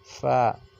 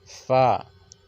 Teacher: सनाया उलिया का किनारा और निचला जो होंठ है, नीचे वाला जो होंठ है, उसके अंदरूनी हिस्से से मिलने से अदा होता है। कैसे?